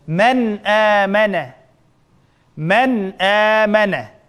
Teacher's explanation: Demek sakinlik nun ve tanvinning keyin mushu gal harflari, ya'ni izhar harflari kelsa, shu sakinlik nun bilan tanvinni asl olti bo'yicha normal g'unnadan xoli holda, ya'ni g'unnasiz talaffuz qilamiz.